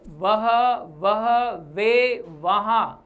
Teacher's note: दंतोष्ट व का उच्चारण करने पर वह, जैसे वह शब्द है तो वह का उच्चारण करने पर देखें ऊपर के जो दांत हैं वो नीचे के होठ को पकड़ते हैं, वह, इसलिए इसको अधर कहा जाता है।